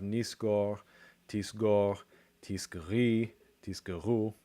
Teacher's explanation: So the vowel is reduced. So when it's not stressed, that o, it reduces to a schwa.